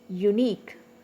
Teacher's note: Okay, U is one syllable, neek is another syllable. It is a disyllabic word. So the stress is on neek.